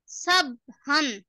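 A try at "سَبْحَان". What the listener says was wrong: সাবহান, সাবহান এরকম বললে তো কলকলা হলো না, তাই না? কলকলা করতে গেলে কি হবে?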